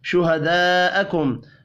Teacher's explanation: بڑی مد کو 5 الف کے برابر کھینچ کر پڑھیں گے